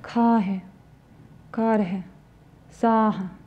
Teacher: И еще одна особенность произношения гласных звуков заключается в том, что краткие гласные звуки в окончаниях слов после звука «х» произносятся очень-очень сглаженно, еле слышно